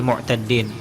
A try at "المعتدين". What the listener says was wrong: mu'taddin biduni tasdid ya.